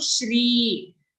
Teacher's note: sometimes we are used to saying Sri. Okay, but here it's a sh sound.